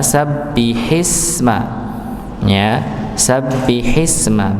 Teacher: ketika ada huruf sebelumnya, hamzahnya tidak terbaca, langsung masuk pada sin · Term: hamzah wasal